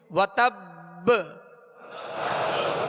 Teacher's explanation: اور اس کو جب یہاں وقف کریں گے مشدد حرف پر تو اس کو مزید جو ہے قلقلہ واضح ادا ہوگا، یعنی وتب با کی آواز واضح ہوگی. وتب حرکت نہ پڑے بلکہ ساکن ہی ادا ہو، اور با کی آواز جو ہے لوٹ کر آئے، یعنی اس میں جنبش ہو